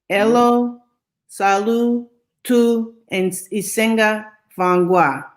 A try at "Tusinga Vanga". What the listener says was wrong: Forget about the I.